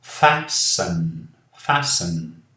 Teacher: Aqui não falamos o T.